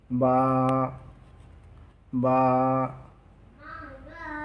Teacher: দুই ঠোঁটের ভিজ অংশ হতে এক আলিফ টেনে বা অক্ষর উচ্চারিত হয়।